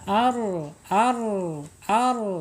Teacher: kemudian al-idlaq Kemudian ketiga mempunyai sifat takrir bergetar kemudian yang keempat mempunyai sifat inhirab condong ke dalam